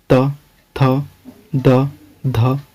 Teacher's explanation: इसमें देख रहे हैं कि इसका उच्चारण हम लोग दांत से करते हैं। जब भी बोलते हैं त, तो वो दांत से जीभ सटता है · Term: त वर्ग